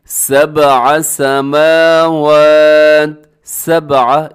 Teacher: آگے دیکھیے گا، سبع سماوات، سبع، اس میں با کو اپنے قلقلہ کرنا ہے کیونکہ با ساکن ہے، حروف قلقلہ میں شامل ہے، اس کی آواز کو ڈبل کرنا ہے